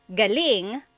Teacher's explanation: So if the emphasis is on the second syllable, galing, that means good or great or excellent